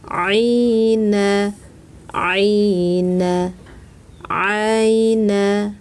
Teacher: 'a' dari tengah tenggorokan